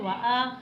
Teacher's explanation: वाव को नहीं खींचना, खड़ी हरकत को ज़रा सा खींच कर पढ़ना है